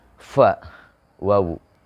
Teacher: ketika nyebutin huruf fa dan wawu, itu tidak nempel bibir atas dan bibir bawahnya. Tidak saling ketemu. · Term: bainas syafatain